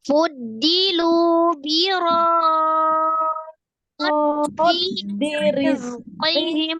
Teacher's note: Kemudian dinya mad ya, mad tabi'iyah ada ya sukun sebelumnya kasroh di huruf dal. Rizqihim, arro'nya kasroh dibaca tipis, zainya sukun, ada as-safir ya, desisan, kemudian terakhirnya mim sukun tetap dibaca sukun karena wakaf ya.